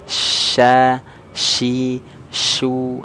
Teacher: sifat at-tafashi itu artinya dia menyebar angin di dalam mulut.